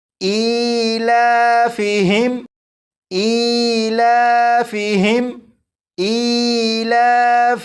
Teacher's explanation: اب اس لفظ کو پڑھیں گے، اور اس لفظ کے شروع میں آپ دیکھیں الف کے نیچے کھڑی زیر ہے، اس لیے اسے 1 الف کے برابر اور لام کے اوپر کھڑا زبر ہے، اس لیے لام کو بھی ایک الف کے برابر کھینچ کر پڑھیں گے · اس میم ساکن میں غنہ نہیں کریں گے